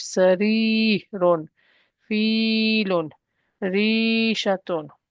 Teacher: a ya preceded by a kasra becomes mud stretch